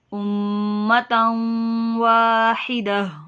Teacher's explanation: तन्वीन के बाद वाव है, इदगाम का कायदा लग रहा है, गुन्ना करेंगे। उम्मतन वाहिदा, वाव पे होंठों को गोल कीजिए और 1 अलिफ के बराबर लंबा कीजिए।